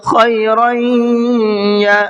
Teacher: اب ان 4 حرفوں کا قاعدہ یہ ہے کہ اگر نون ساکن یا تنوین کے بعد میں ان 4 حروف میں سے کوئی حرف آ جاتا ہے تو تھوڑا سا غنّہ کر کے پڑھیں گے، ناک میں آواز کو چھپا کر کے پڑھیں گے